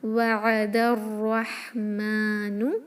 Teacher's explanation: دال کو ملائیں گے الرحمن کے را سے، وعد الرحمن، را ہیوی رکھیں، اس کو رحمانو نہ پڑھیں ، رحمان نہیں ہوتا، را ہوتا ہے اور یہ ہا ہوتا